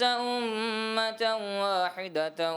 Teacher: ادغام کا غنہ تھا اس میں کمی کر دی